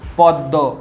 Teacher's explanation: প দয় ম, দয়ের সঙ্গে আছে, তাই দটা দুবার উচ্চারণ হচ্ছে